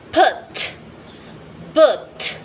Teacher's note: closing the lips and then the releasing the closure abruptly